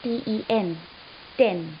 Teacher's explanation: That is how stops or the sounds are produced in a word like ten. So you stop the air stream and then let it go abruptly